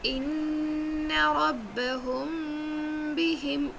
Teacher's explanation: یہاں پر دیکھ رہے ہیں ربہم میں میم ساکن ہے اور میم ساکن کے بعد یہ با آ رہا ہے، تو آپ کو یہاں پر تھوڑا سا غنہ، تھوڑا سا اخفاء کرنا ہے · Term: اخفاء شفوی